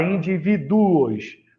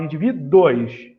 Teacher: Você não fala indivíduos, você fala indivíduos. Então, fica todo mundo junto, formando o ditongo crescente lá no final dessa palavra